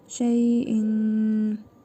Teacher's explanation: Sonra fə hərfi gəlib. İhva qaydasına görə tənvindəki nun hərfini burnumuzda tələffüz edərək bir əlif miqdarı uzadırıq. Şeyin. Fə hərfidir.